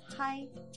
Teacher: ha ha first plus i makes hai in the third tone